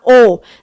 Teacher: สระโอลิ้นของเราจะไปอยู่ข้างหลังคือมีการดึงลิ้นไปข้างหลังนะคะ